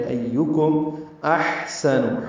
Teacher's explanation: ایکم احسن، ہا ساکن پہ ہم سے حمزہ اقصی حلق سے، ہا وسط حلق سے ادا کریں گے. سین نون جلدی اور معروف پڑھیں گے.